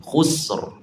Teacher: Jangan khusr, tu nipis, kena khusr. Kita matikan sin, buat getaran ra yang tebal, lengkungkan tengah lidah.